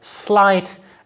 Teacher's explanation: your larynx and saying those words say something like slight and you will feel that vibration only starts once you get into the vowel